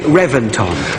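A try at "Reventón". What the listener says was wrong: No, I know it's spelt with a V, but it's pronounced with a B. They've told us it's B, Reventon.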